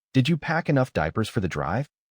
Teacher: Say the sentence once with normal stress, not word by word. The important noun should stand out while did you and for that can stay light and connected.